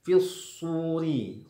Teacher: shadnya tebal, ra-nya tipis